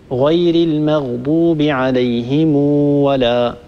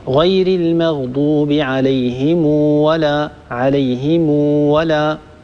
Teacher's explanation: صلة ميم الجمع يعني أن نصل هذه الميم بواو اللفظية، أن نصل هذه الميم بواو اللفظية، يعني حينما نصل الكلمة المنتهية بميم الجمع بما بعدها نصل هذه الميم بواو اللفظية، يعني نلفظ هذه الواو بعد الميم ولا نكتب هذه الواو